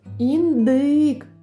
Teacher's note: наголос падає на звук и